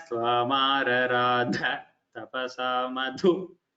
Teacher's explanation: A little more Mahaprana should improve. It should come as Tvamaradha Tapasa Madhu.